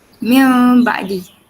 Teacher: Dia macam ada mim ringan dekat antara nun mati dengan ba tu. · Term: iklab